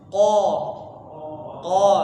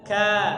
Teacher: Kalau huruf qaf tadi di langit-langit yang lunak, yang enggak ada tulangnya. Kemudian huruf kaf itu di langit-langit yang keras. Perbedaannya lagi adalah huruf qaf itu dia isti'la, jadi tebal, lidahnya naik ke pangkal lidahnya naik ke langit-langitnya.